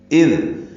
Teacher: اذ حمزہ اقصی حلق سے ادا کریں گے، دال سے ملائیں گے، دال کو نرمی سے ادا کریں گے